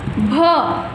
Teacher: भ बोलते समय आपके दोनों होठ होते हैं आपस में एक दूसरे को टच कर जाते हैं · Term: ओष्ठौ